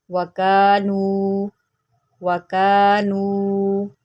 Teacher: اس کو ہم ایک ایک الف کے برابر لمبا کریں گے، کیونکہ یہاں پر الف مدہ ہے اور یہاں پر واو مدہ.